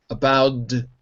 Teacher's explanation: the T in about becomes a D